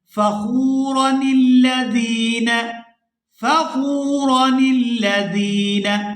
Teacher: یہ نون زیر کے ساتھ لام مشدد کے ساتھ ملائیں گے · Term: نون کتنی